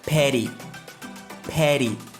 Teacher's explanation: Les deux T se transforment en une sorte de D rapide. C'est pas un véritable D, comme petty.